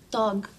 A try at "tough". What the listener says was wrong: Oh, remember I told you the G-H sometimes sounds like an F. It's tough, like rough or laugh.